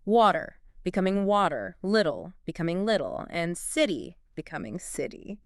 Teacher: two vowel sounds especially an unstressed vowel and a stressed one Americans tend to just flap their tongue against the roof of their mouth really quickly oh and it creates a sound that's closer to a d